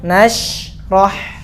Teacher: sya itu anginnya pecah di dalam, namanya tafasyi. Rah. Kalau ha itu langsung keluar.